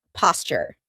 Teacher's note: a T and A Y sound together make a CH sound